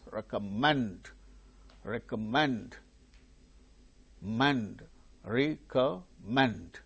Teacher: The third syllable gains stress.